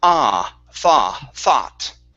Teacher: Thought. Yeah, so no oo sound there. So only an ah. So it's one vowel sound.